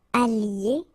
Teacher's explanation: Okay, so que j'aille, listen to me, aille, okay, que tu ailles, qu'il aille, qu'elle aille, que nous, and that's the difference here, allions, allions, okay, que vous alliez, okay, I don't make the liaison just for you to listen carefully